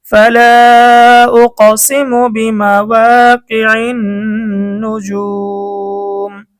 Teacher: পেশের পরে ওয়াও সাকিন মদের হরফ, মদের হরফের পরে ওয়াকফ করার কারণে মধ্যে আরজি 3 আলিফ টান।